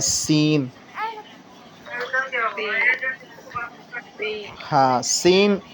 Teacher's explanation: सीन सीन तो इसका जो मखरज होता है वो जो हमारे दांत होते हैं टीथ ऊपर नीचे के अपर और ये जो नीचे वाले दांत हैं तीन उनको मिलाकर के पूरी बत्ती को और जबान की सिरों को नोक को बीच सेंटर में जब लगाते हैं ना तो सीन अदा होता है · تو اس کا جو مخرج ہوتا ہے، وہ جو ہمارے دانت ہوتے ہیں، ٹیتھ، اوپر نیچے کے، اپر اور یہ جو نیچے والے دانت ہیں، ان کو ملا کر کے پوری بتی کو اور زبان کی سروں کو نوک کو بیچ سینٹر میں جب لگاتے ہیں نا تو سین ادا ہوتا ہے